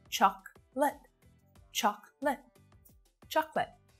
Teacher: there this one is for you not chocolate but choc li so that last syllable is also really short both vowel sounds in these syllables are really short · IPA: /ˈtʃɒk lət/